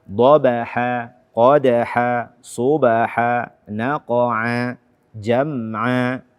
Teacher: Kemudian kaum muslimin dan muslimat, as-saimin was-saimat, terdapat beberapa ayat atau di awal-awal ayat dari 1 sampai 5, di akhirnya ini, akhir setiap ayatnya adalah mad iwad. Mad iwad yang panjangnya 2 harakat.